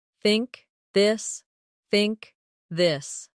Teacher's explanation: The tongue comes gently between the teeth. For think it's soft. For this it's voiced. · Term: th sound